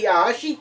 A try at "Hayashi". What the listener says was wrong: You emphasized it way too much. Kaz Hayashi.